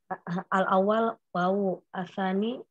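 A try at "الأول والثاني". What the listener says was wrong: Ini bukan wawu, al-awwalu wasani gitu. Al-awwal wasani.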